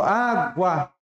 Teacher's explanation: E o U, a gente quase nem escuta, ó. Água. Bem fraquinho. O U vai ser semi. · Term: semivogal